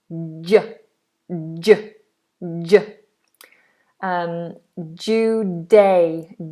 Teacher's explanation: This is a sound that a lot of people struggle with. It's like a D, d, d, d, but a little bit more of the tongue is making contact with the roof of the mouth.